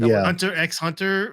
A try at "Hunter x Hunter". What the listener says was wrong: I don't think you pronounce the X. No, it's just silent. No pronouncing.